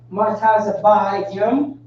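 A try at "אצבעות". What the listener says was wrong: Fingers is not ma, it's ah. Ah tazabai. Ah tazabayim would be fingers.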